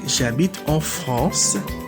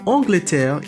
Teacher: feminine form in french so we would say shabbit of france no liaison because france starts with a consonant